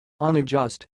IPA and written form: ʌnəˈdʒʌst (unadjust)